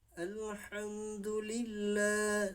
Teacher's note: Alhamdulillah, la pada huruf lam di lafaz Allah, yaitu hukum bacaannya terdapat hukum bacaan mat tabi'i, sehingga kita membaca lafaz Allah di sini lamnya, pada huruf lamnya yaitu 2 harakat agak panjang sedikit